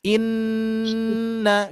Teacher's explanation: Inna, ketika kita mengucapkan inna, kita tutup saja hidung kita. Nah ya, tutup hidung kita langsung suaranya hilang. Itu adalah kaitannya dengan makhraj al-khusyum, yaitu rongga hidung ya.